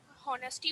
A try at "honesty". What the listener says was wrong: And beta हम honesty नहीं pronounce करते हैं. It is honesty. The H is silent here.